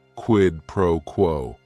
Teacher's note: if you're saying it together, the stress is kind of on that first word and that last word